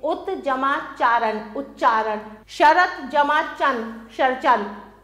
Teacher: त के बाद च या छ हो तो त का च हो जाता है।